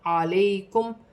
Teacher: یا ساکن سے پہلے زبر ہے تو یا لین بنے گی, اسے کھینچا نہیں جائے گا